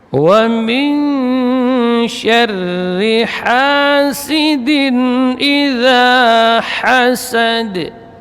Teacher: Ha tipis, ya, huruf hamas dan rakhawah